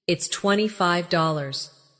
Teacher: Stress the number slightly so it's clear to the listener.